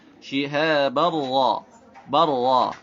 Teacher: Ra-nya harus dibaca tafkhim. Kenapa? Karena ra-nya berharokat fathah.